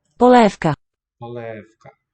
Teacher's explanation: I think the V devoices before the K sound.